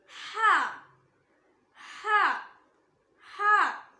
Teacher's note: இது தொண்டையோட அடி பாகத்திலிருந்து வரணும்